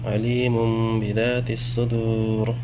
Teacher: نون ساکن اس کے بعد پھر با آ رہا ہے، نون ساکن کو میم میں بدل دیں گے